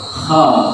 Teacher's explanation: Jadi naik. Jadi lidah yang di belakang dekat tenggorokan itu naik ke langit-langit. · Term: isti'la